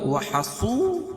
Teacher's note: واو ساکن سے پہلے پیش ہو تو واو مدہ ہوتا ہے، اس کو 1 الف کے برابر کھینچ کے پڑھیں گے